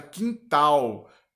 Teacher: Por exemplo, a palavra quintal. Tal é a sílaba mais forte. Logo, também é um exemplo de oxítona.